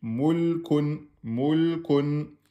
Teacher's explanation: le lemme soukoun, vous pouvez mettre un temps et demi.